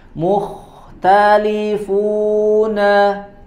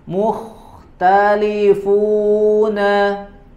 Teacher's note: Huruf mim mu, kemudian huruf ta juga dibaca tipis, huruf kha-nya yang dibaca tebalnya.